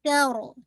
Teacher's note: تا لائٹ ہوگی، را کو ہیوی کیجیے گا